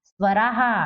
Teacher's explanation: आ की मात्रा के बाद में यदि विसर्ग हो तो क्या होगा? हा होगा।